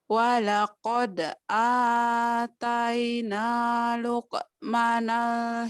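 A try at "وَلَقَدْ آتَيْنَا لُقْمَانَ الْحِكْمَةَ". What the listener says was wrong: panjang, Luqma panjang.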